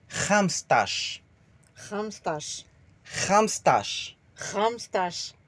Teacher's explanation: Le R raclé comme on dit le mot cracher.